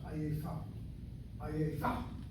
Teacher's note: But for the word ayefa, we hit the last syllable, so that kamat is 2 places removed, reduced to a shvana.